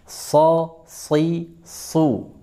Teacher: Pada saat dia di kasrah, dia masih terasa tebalnya. Si. Coba ditegangkan semua lidahnya mulai dari pangkal sampai ke tengah lidah ini. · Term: itbaq